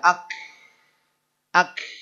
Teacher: Sampai-sampai K-nya nggak ada, yang ada H-nya.